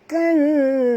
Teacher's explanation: Nun mati bertemu zai, kita kena sembunyikan bunyi nun ke dalam zai disertai dengung 2 harakat.